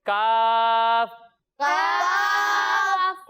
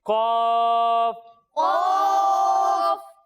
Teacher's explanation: جب ہم کاف کی ادائیگی کریں گے تو اسے ہم باریک پڑھیں گے اور جب ہم قاف کی ادائیگی کریں گے تو اسے ہم موٹا پڑھیں گے